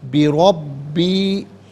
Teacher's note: را کو پر کر کے پڑھیں گے، با مشدد جماؤں کے ساتھ پڑھیں گے، یا مدہ کے اوپر مد کی علامت، اسے بھی منیمم 3 سے 4 حرکات کی مقدار کھینچ کر پڑھنا چاہیے، میکزیمم اس کو 5 سے 6 حرکات کی مقدار کھینچ کر پڑھ سکتے ہیں۔